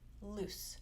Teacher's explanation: loose, actually the vowel is the same sound but it is slightly shorter